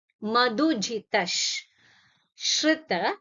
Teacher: you ಸೀ here ಮಧು ಧು ಇಸ್ ಮಹಾಪ್ರಾಣ ಸ ಮಧುಜಿತ you have ವಿಸರ್ಗ followed by ಶ್ರೀ so it will take the sound as ಇಶ್ so when you are saying it you will say ಮಧುಜಿತಶ್ ಶೃತ